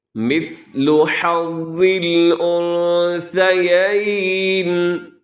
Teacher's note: آگے دیکھیے گا، مثل حظ الانثیین، پھر سنیے گا، مثلو میں سا کو سین نہ کیجیے گا، اسے مثلو نہیں کرنا آپ نے، بلکہ یہاں پہ تھوڑا سا آپ نے کیا کرنا ہے، بہت کنٹرول کرتے ہوئے آپ نے حرف سا کو ادا کرنا ہے کہ اس کے اندر سیٹی نہ رہے۔